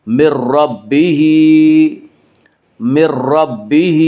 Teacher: من ربہ میں ادغام بلا غنہ ہوگا۔ اس کا قاعدہ یہ ہے کہ نون ساکن یا تنوین کے بعد اگر حروف یرملون میں سے کوئی حرف آئے تو ادغام ہوگا، لام اور را میں ادغام بلا غنہ ہوگا، اور یا نون ساکن کے بعد را آ رہا اس لیے یہاں پہ ادغام بلا غنہ ہوگا۔